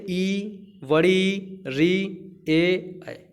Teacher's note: अग्र स्वर का मतलब होता है आगे की जीभ से बोला जाता है